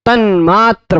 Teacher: त की जगह पे अनुनासिक होगा तो क्या बनेगा? न, तन्मात्र बन जाएगा।